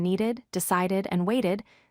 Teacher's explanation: When you hear the ID sound, like in needed, decided, and waited, there is an extra short syllable at the end.